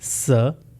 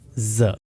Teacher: अगर vocal cords vibrate नहीं करेंगे तो इट विल बी स साउंड और अगर वोकल कॉर्ड्स वाइब्रेट करेंगे तो ज साउंड प्रोड्यूस होगा